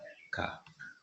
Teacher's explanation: स्पर्श व्यंजन, कंठ ध्वनि अघोष और महा प्राण ध्वनि